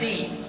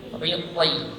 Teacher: Huruf toh ketika kasrah juga tebal